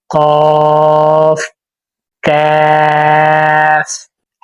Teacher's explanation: زبان کی جڑ اور تالو سے ادا ہوتے ہیں۔